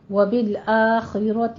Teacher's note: خا کو پر پڑھنا ہے، را کو بھی پر پڑھنا ہے